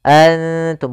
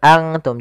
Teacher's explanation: Karena dia ikhfa itu menyamarkan huruf kepada huruf setelahnya. Yaitu nunnya disamarkan kepada huruf ta · nun makhrajnya di langit-langit, ujung lidah menempelkan dengan langit-langit. Maka makhraj huruf ta mendekati huruf nun, maka dinamakan di sini dengan ikhfa aqrab.